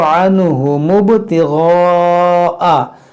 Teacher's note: اس الف کو ہم نہیں پڑھیں گے، جب ملا کر پڑھیں گے تو عنہم ابتغاء، یہ غین کو موٹا کریں گے، یہ مد منفصل ہے.